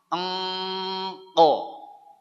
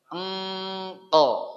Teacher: Kita ucapkan eng, jangan diputus, lalu keluarkan ko. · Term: huruf qaf